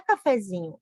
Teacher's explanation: Cafezinho tem a sílaba tônica no zi, então não tem acento no e, tá?